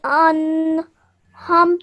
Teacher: you hold that nasal sound in your nose